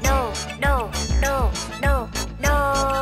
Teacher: Trong tiếng đồ chứa âm ô và thanh huyền các em đã được học.